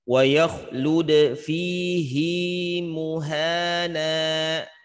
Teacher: Jadi pada kata fihi menyalahi kaidah, menyalahi teori ya. Jadi hi-nya tersebut jangan dibaca pendek, justru harus dibaca panjang. Kalau kita baca pendek justru salah ya.